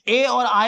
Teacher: जो आपके दोनों ए और आए होते हैं वो कंठ और तालु से मिलके बोले जाते हैं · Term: कंठ तालु